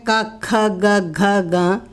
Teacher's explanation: कवर्गः चवर्गः टवर्गः तवर्गः पवर्गः। कवर्गः जो है हमारे कंठ को टच करता है